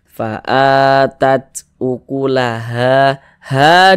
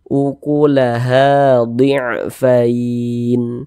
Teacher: ha dibaca panjang Mad thobii panjang dua harakat